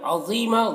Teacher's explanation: ضا کو پر پڑھنا ہے اور یا مدہ ہے، یہاں پر ایک الف کے برابر کھینچیں گے اور یہاں پر وقف کریں گے تو ایک زبر کے ساتھ الف پڑھنا ہے۔